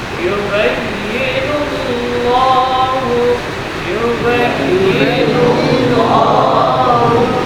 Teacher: Lafzul jalalah di sini dibaca tebal karena sebelumnya dhamma